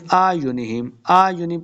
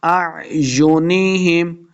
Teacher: عَلَىٰ أَعْيُنِهِمْ نہیں پڑھیں گے، پہلا حمزہ دوسرا عین ہے، دونوں کو حمزہ نہیں پڑھیں گے